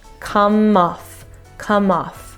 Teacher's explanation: the M sound is going to start the off